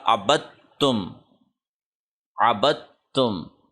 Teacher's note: با کو ہم نے ڈائریکٹ تا کے ساتھ کنیکٹ کر دینا ہے، کیونکہ تا پہ تشدید ہے، اور دال کو بائی پاس کر دینا ہے